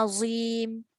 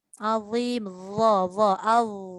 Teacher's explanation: Kalau Z dia akan jadi az. Dha ni dia tidak ada desiran. Sebab tu kita kena keluarkan hujung lidah. Al. Kalau hujung lidah tak keluar maka dia akan bunyi az.